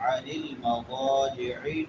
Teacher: العین وسط حلق سے · میم ساکن ہے اور اس کے بعد حروف حلقی میں سے عین ہے. یہاں پہ کیا ہوگا؟ اظہار ہوگا